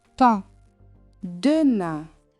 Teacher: Do not say a full English N. Keep the sound forward and tight. · Higher and tighter than EN. Light, narrow, and nasal. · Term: IN sound